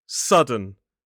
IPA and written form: ˈsʌdən (sudden)